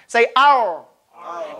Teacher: If you say the letter ra correctly, your tongue rolls back to the makhraj of lam. Say ar. And try not to let your tongue touch the teeth. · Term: inhiraf